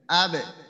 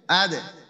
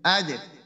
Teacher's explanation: বা জিম দাল, এই তিনটাতে যখন কলকলা হবে তখন এটা নিম্নমুখী হবে